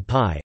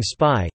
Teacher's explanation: Initial voiceless stops, like the p in pie, are aspirated, with a palpable puff of air upon release, whereas a stop after an s, as in spy, is tenuis (unaspirated).